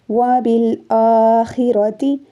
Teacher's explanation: خا کو حلق سے نکالنا ہے